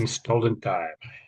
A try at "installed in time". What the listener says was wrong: Okay, so I would say when you're saying the in, it's not quite clear enough, maybe.